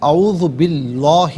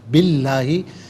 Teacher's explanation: اس میں اللہ کے حرف لام سے پہلے زیر ہے تو اسے باریک کر کے پڑھتے ہیں